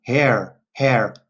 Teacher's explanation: So in Ireland, they would say hair, hair. They pronounce the R as well.